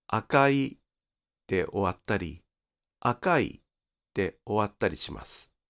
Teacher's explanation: with akai, the pitch may or may not drop on i. So it can end as akai (LHH) or as akai (LHL).